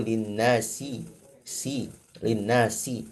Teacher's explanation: Ini sifat huruf shafir pada sin.